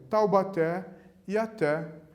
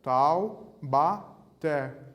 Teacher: A sílaba tônica é a última, é o té e o té aqui de novo. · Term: oxítonas